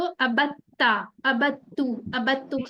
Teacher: यानी कि दाल को बदल के हमने ता बना लिया